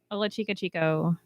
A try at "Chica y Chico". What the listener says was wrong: You don't pronounce the Y? So it's like an E. Like, eh. Like the Italians go, eh.